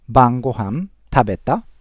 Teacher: in short form casual conversation we don't use the question particle ka but instead we use rising intonation to indicate it's a question